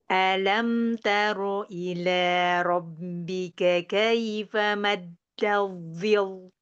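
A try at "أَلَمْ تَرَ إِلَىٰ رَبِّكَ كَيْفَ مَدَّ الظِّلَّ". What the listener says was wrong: Lamnya jangan tebal. Biasa, jangan zil, jangan gitu.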